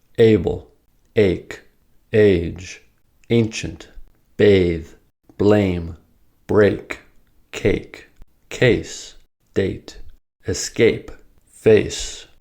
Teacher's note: for A, you begin with the eh sound and then glide into E sound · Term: diphthongs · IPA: /eɪ/